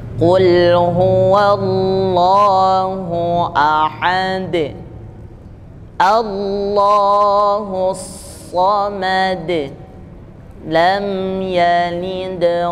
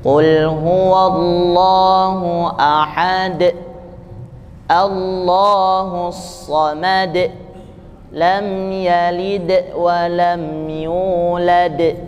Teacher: Jadi huruf dalnya pantulannya terdengar pada lidah, bukan pada pangkal tenggorokan. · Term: qolqalah, qalqalah